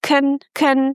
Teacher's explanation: So it's not control, it's con con very short neutral sound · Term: shwa sound